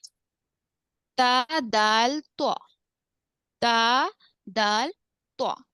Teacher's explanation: जुबान की नोक ऊपर के दांतों के अंदरूनी हिस्से को लगने से अदा होते हैं जुबान की नोक दोनों दांतों के जड़ को ऐसा भी कह